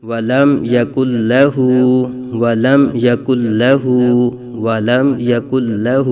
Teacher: الٹا پیش قائم مقام واو مدہ ہے، یہاں ایک الف تک کھینچیں گے